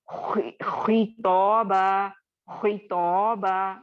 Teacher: खौ को मोटा करके नहीं पढ़ रही हूँ क्योंकि तफखीम का लेटर है, लेकिन चूंकि इसके नीचे या इसके पहले कसरा आ रही है तो मैं इसको बहुत ज्यादा मोटा करके नहीं पढ़ूंगी, बल्कि उसका हक अदा करते हुए एक बैलेंस्ड तौर पर पढ़ूंगी। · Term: थर्ड लेवल का मोटा